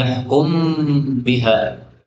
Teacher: mim ketemu ba, ini boleh idgham menjadi yahkum biha